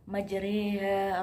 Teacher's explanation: ro dibaca imalah atau condong, yaitu membaca antara harokat fathah dan kasroh atau di bawahnya taklil.